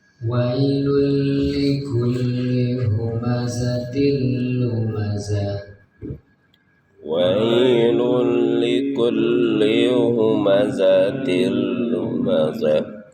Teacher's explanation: huruf lam adalah huruf idgham bila gunah. Cara membacanya tidak ada bunyi nunnya.